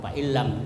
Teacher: jadi tidak kentara itu nunnya, ya. Jadi dia menyatu dengan lam, fa'illam, dan tidak mendengung, fa'illam.